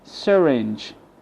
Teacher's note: the Y replaced with schwa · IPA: ə